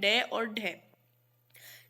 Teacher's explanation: जिनके उच्चारण में जीभ पहले ऊपर उठकर तालु के अग्र भाग का स्पर्श करे, फिर झटके के साथ नीचे को आए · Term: उच्छिप्त व्यंजन